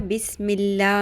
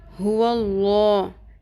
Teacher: हुल्ला में वाव है उसके ऊपर जबर हो या पेश हो अगर जेर होगी तो अल्लाह के नाम के अंदर जो लाम है वह लाम पुर नहीं होगा बारीक ही रहेगा